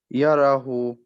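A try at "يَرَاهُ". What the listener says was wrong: Make the ha a bit longer. Yarahu. Yarahu. If you say yarahu, if you just say yarahu, it sounds like the ha has a normal dhamma, normal pesh. Okay, but we want to different, make it different.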